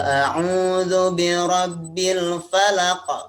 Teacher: jadi di akhirnya tuh ada pantulan ada pantulan